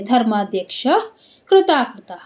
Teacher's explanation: ಕ್ಷ ಮುಂದೆ ವಿಸರ್ಗ ವಿಸರ್ಗದ ಮುಂದೆ ಕೃ ಇದೆ ಅದಕ್ಕೆಲ್ಲ ಅರ್ಧ ಹ ಆಗುತ್ತೆ